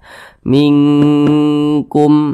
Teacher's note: suaranya itu kita tahan ya kita panjangkan sejenak sepanjang dua harakat